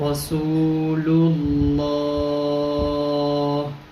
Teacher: اب یہاں پہ لفظ اللہ یہ موٹا ہے اور یہ رسول کا جو لام ہے یہ باریک ہے، تو اس کو پڑھتے ہوئے اس لام کو ہم نے دھیان میں رکھنا ہے کہ یہ لام موٹا نہ ہو، جیسے رسول لو، اب یہ لو اگلے کے ساتھ لام کے ساتھ ملا ہے تو اگلا موٹا ہوا ہے، للہ للہ للہ، رسول اللہ، تو اس کا خیال رکھنا ہے آپ نے۔